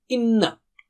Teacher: ghunna means to have nasal sound, two harakat